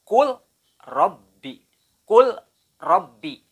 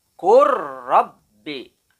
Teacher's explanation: Kalau membaca secara idgham mutajanisen, maka huruf lamnya harus diidghamkan ke ro. Lam terpaksa harus hilang atau lebur, dan yang lebih terdengar adalah suara ro-nya.